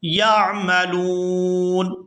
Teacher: وقف کی صورت میں نون جو ہے یہ ساکن ہو جائے گا